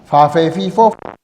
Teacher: El labio inferior asciende y choca con los incisivos. Entonces tenemos aquí un sonido labiodental.